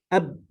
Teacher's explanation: Ketika kita ucapkan secara spontan dengan cepat, ab, tidak ada, tertutup, ya, napasnya tidak keluar. Ab, nah gitu, tertutup, tidak jadi ab, ya tidak.